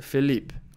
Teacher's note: I notice a devoiced ending. So, I hear Felipe.